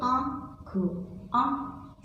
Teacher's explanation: जैसे आँख, आँख छोटा सा स्वर नाक से भी और मुंह दोनों से सुनाई देता है, वो होता है अनुनासिक।